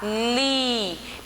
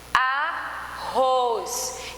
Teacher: percebe que o li ele tem uma tonicidade maior a última sílaba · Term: oxítona